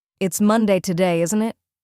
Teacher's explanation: If your voice goes down at the end, you're fairly sure of the answer and just checking. "It's Monday today, isn't it?" Falling tone.